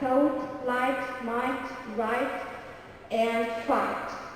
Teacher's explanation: the GH is not pronounced before a T at the end of many words like thought, light, might, right, and fight. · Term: Silent GH